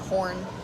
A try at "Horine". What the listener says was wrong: Oh my god. There's an I, people.